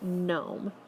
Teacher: GN, which the G would be silent and you would only hear the N sound.